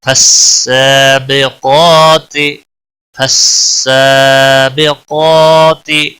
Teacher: قاف موٹا پڑا جائے گا اور اس کو بھی ایک الف کے برابر کھینچنا ہوگا کیونکہ اس کے اوپر مد اصلی ہے، کھڑی زبر ہے.